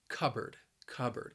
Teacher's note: with two words cup and board but you're not going to pronounce that second syllable like board it's just going to be bird